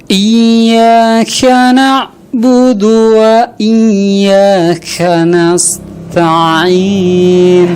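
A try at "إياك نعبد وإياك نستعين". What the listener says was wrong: Taknya nggak keluar, dalnya malah keluar gitu ya. Coba diperhatikan huruf-hurufnya dulu sebelum dibaca, diperhatikan dulu, konsentrasi.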